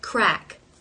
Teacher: even though the K is a stop consonant I've noticed that if I'm finishing a word with K like crack there's always for me a very light release of that k sound